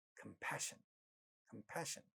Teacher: pa at the initial position getting aspirated in this word, and it sounds as compassion.